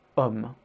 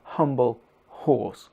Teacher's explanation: In English, just like in German, the letter H results in a strong blast of air, like in humble, horse. But in French, just like in Spanish, the H is not pronounced.